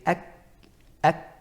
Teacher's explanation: The back of the tongue is touching the upper palate, and it's restricting that flow of sound. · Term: kaf